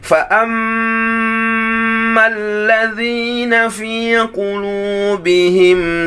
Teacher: Mim tasydid adalah tingkatan yang pertama, harus lebih lama.